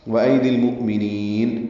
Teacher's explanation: ملائیں گے، اظہار قمری، مؤمنین، حمزہ ساکن جھٹکے سے ادا ہوگا، نین میں نون کو لمبا کر دیں گے وقفاً